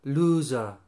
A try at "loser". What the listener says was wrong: Not looser.